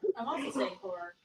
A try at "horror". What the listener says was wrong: You're saying whore. I'm saying horror.